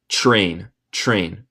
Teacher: Cuando tenemos TR en inglés, muchas veces suena como CHR.